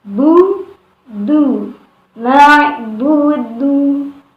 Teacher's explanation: Ini berharokat dhammah, ya. Cara mengucapkannya dengan tetap memulai makhraj ba dengan dal itu dari makhrajnya. Kemudian baru memajukan atau memonyongkan bibirnya.